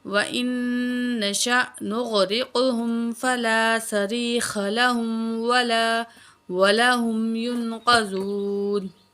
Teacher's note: کاف کو موٹا کر کے پڑھیں گے, حمزہ پہ جھٹکا دیں گے اور نون میں غنہ کریں گے